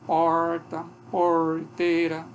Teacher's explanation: tem também isso como ocorre como variante fonética traço dialetado português Esse é retroflexo que ocorre por exemplo em porta Porteira